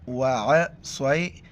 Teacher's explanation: عین کو گلے سے ادا کرنا ہے